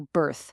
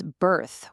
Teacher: Notice how that R is kind of soft, but hop over to the US and it becomes birth with a much stronger, harder R sound